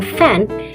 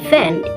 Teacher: In fricative, F and V are produced in the same way, but F in fan is voiceless and V in van is voiced.